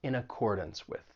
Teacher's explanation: And keep in mind that final syllable in accordance, even though it's spelled D-A-N-C-E, you're not going to say dance. It's going to have that schwa sound. It's going to sound like dunce.